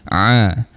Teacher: Ain kita berikan penekanan sikitlah di tengah rongga kerongkong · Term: huruf ain